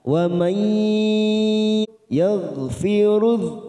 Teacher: Wa may nun sukun bertemu ya idgham bi gunnah kita tekan 3 ketuk siap masuk pada huruf ya.